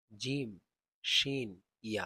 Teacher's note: জিম উচ্চারিত হয় জিহ্বার মধ্যখান তার বরাবর উপরে তালুর সঙ্গে লাগিয়ে